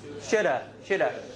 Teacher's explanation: Shoulda is actually should have, right? Should have, right? You get rid of the H, you get rid of V, okay? When it's usually followed by a consonant, you get rid of the V.